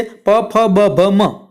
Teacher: આ 5 વ્યંજન છે પ વર્ગના છે અને એનો પ્રકાર છે ઓષ્ટ્ય, કે પ, ફ, બ, ભ, મ એ તમે બોલો ત્યારે ફરજિયાત તમારા 2 હોઠ ભેગા થાય તો જ તમે આ વ્યંજન બોલી શકો